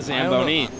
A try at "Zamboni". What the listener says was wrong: That was a lot of emphasis on the knee.